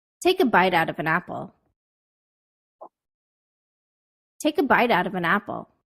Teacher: my pitch the musical note of my voice was highest on the most important words in the sentence